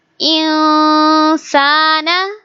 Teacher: we will make ikhfa sound here and we will hide the noon sound in our nose